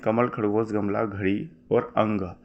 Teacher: ये सारे के सारे जो है दोस्तों कंठ से बोले जाते हैं यानी कि आप जब बोलोगे तो आपको कंठ में वाइब्रेशन जो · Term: कंठ ध्वनि